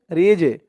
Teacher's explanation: এই জিমটাও কলকলার হরফ ধাক্কা দিয়ে পড়তে হবে